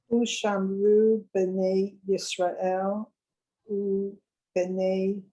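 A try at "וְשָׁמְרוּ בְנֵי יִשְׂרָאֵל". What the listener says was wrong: Try that one. You went a little fast.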